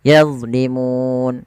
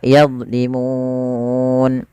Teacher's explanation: Mad yang terjadi di akhir bacaan kita disebabkan karena ada sukun Arid panjangnya berapa harakat sehingga mu di sini kita boleh baca dua boleh empat atau boleh enam